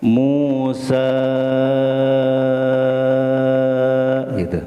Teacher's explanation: Musa sepanjangnya 5 harokat atau 2 alif setengah. Jadi 5 ketukan. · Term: mad jaiz mun fasil